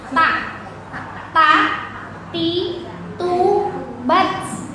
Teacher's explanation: Ujung lidah nih nempel ke gigi seri yang atas.